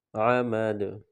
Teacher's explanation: یہاں بھی یہ حروف قلقلہ ہے، جب یہاں پر وقف کریں گے تو دال پر قلقلہ کریں گے